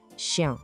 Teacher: O segredinho aqui é o som nasal no final. Tente não falar o N, mas deixar o som sair pelo nariz.